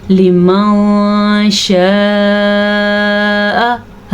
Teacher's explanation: نون ساکن اور تنوین کو کسی حد تک چھپا کے اور غنے کے ساتھ پڑھتے ہیں